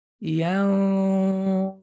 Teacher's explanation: Ya, so ya is a light, and see how I'm gonna move from a light letter, and my ghunna is gonna move my mouth to prepare for the dha. Dha is heavy, right?